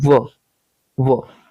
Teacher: दंतोष्ठ मतलब दांत और होठ इन दोनों से निकलता है